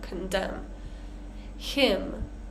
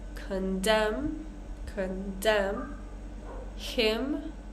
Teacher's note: we want to get the stress correct on this word condemn right so the stress is on the second part